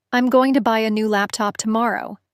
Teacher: you'll hear more stress on buy, laptop, and tomorrow.